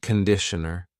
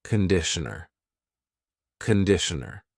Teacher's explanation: It's not conditioner, it's conditioner. The first vowel is a schwa.